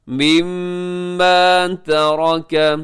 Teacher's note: را موٹی پڑی جائے گی، تا اور کاف باریک ہوں گے۔ را اس لیے موٹی پڑی جائے گی کیونکہ را کی اوپر حرکت ہے۔